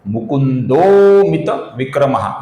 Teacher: आप जानते हैं इसे कहा जाता है अवग्रह। इसका हम अ की जगह पर लंबाई से उच्चारण करते हैं, इसलिए इस मुकुंदः के विसर्ग का होगा ओ और फिर लंबाई के साथ अवग्रह का उच्चारण अ की जगह पर होगा तो इसलिए इसका उच्चारण होगा मुकुंदोमित विक्रमः।